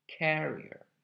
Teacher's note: it's important to stress the first part